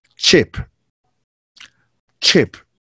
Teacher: Affricate sounds are pronounced with two sounds at the same time. So here we have the T and sh